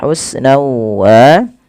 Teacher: masukkan tanwinnya kepada huruf waw karena dia idgham bi gunnah